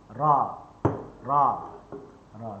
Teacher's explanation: Muka lidah kita ni depan ni dia duduk di di gusi yang timbul. Gusi yang timbul ni dia duduk di sinilah dalam keadaan yang ringan. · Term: huruf ra